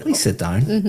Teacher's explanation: my intonation is going up